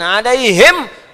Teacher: kalau diucapkan ha itu 50% lebih nafas keluar ya